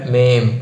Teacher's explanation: മേന്റെ മുകളിൽ ഒരു കുത്ത് ഉണ്ട് അല്ലേ അപ്പൊ അം എന്നുള്ള ഉച്ചാരണം കൂടി ഉണ്ടാകും